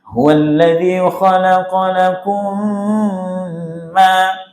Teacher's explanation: sempurnakan dengungnya karena mim sukun bertemu mim, dan pasti mim yang kedua dikasih tasydid.